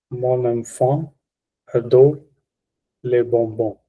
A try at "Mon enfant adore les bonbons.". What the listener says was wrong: j'avais entendu adore, adore. Il faut prononcer R bien. enfant adore les bonbons. J'avais pas entendu R au final.